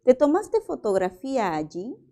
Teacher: También el tono es ascendente